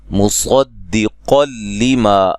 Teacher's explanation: صاد کو موٹا ادا کریں گے، قاف کو بھی موٹا ادا کریں گے، اور یہاں نون تنوین کا ادغام ہے، بلا غنہ، غنہ نہیں کریں گے۔